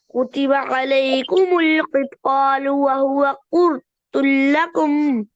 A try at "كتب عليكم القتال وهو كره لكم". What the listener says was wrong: फिर ता मोटा हो गया.